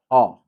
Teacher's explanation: Short and steady weak a sound. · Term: Inverted e